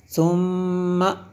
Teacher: میم مشدد ہے اس لیے غنہ کیا